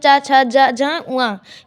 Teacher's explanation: ये तालु का स्पर्श करते हैं। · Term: च वर्ग